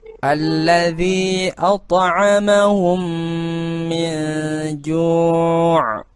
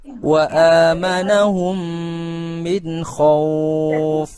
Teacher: Cara membacanya adalah memasukkan huruf mim sukun ke dalam huruf mim, setelahnya disertai dengan suara gunnah sekitar 2 ketukan atau 2 harakat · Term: idgham mithli